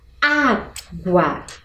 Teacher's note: Qual é o som mais forte? Ele se encontra no primeiro A e, portanto, eu devo acentuar.